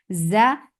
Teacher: Za will get sifa of rakhawa, and it is light, and it has safir.